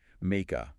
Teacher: Notice how make and a link together smoothly.